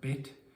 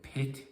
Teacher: confusing a voiced and unvoiced sound uh like saying pit instead of bit can lead to misunderstandings